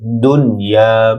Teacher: দুনিয়া দাল নুনের সাথে যুক্ত হবে, নুনে গুন্না